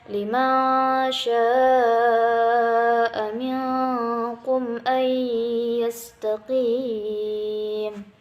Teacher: Hukumnya idgham bi gunnah, dimasukkan dengan dengung. Jadi harus direndam dulu selama 2 harokat.